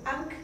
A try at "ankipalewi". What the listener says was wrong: No. ¿Ank? No existe. Acuérdate, no hay dos consonantes. Anki Palewi. No puede haber dos consonantes nunca a principio de la así.